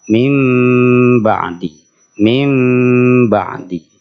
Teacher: iqlab itu membalik atau mengganti suara Nun matinya diganti dengan suara mim Tapi bukan sekedar mengganti suara Nun menjadi mim Tapi juga ditahan